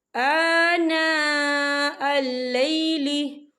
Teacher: آنا خاللی سے پہلے زبر ہے اور اس پر مد بھی ہے، تو ہم اسے 4 حرکت کے برابر کھینچ کے پڑھیں گے